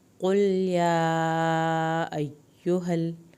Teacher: قل لام کو نہیں ہلانا، یا کو کھینچنا ہے کھڑی زبر اور چھوٹی مد کی وجہ سے